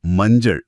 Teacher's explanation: இதுல ஞ அப்புறம் ச, நாக்கின் மையப்பகுதி மேலெண்ணத்தை தொடும்போது ரொம்ப சுலபமா அடுத்தடுத்த ஒலிகள் பிறக்குது.